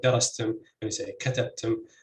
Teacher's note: both have stress on the first syllable in the word.